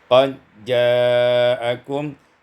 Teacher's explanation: Pada ayat yang ke-19, qad ja'akum idghamud dal fil jim. Fil jim diidghamkan dal pada jim, maka menjadi qad ja'akum.